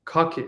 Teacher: I'm not going to aspirate the K. I'm just going to put my own K